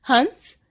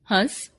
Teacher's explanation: अनुस्वार के उच्चारण में श्वास वायु नाक से निकलती है। जबकि अनुनासिक के उच्चारण में वायु, नाक और मुंह दोनों से एक साथ निकलती है।